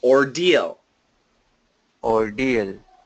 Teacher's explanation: make that a light L